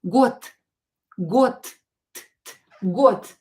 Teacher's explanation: you can hear that I pronounce D as T